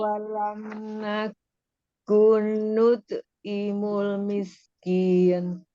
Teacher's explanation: Nut'nya dikolkolahkan. Kolkolah sugro ya.